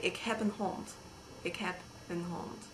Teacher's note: In Dutch, when Dutch people speak Dutch, the final consonant of a word is often devoiced, which means if you were going to normally pass air through your vocal cords when you said that, you don't anymore and you just breathe. So D becomes T and B becomes P and that sort of thing.